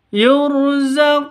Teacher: panjang dua ketukan karena ada wau mati diawali dengan dommah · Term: mad asli